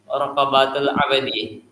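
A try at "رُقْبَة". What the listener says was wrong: Jadi itu cuma pembacaan raqabah itu dibaca rukbah.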